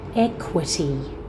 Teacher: Check you're getting a qu cluster. There is a k and then w.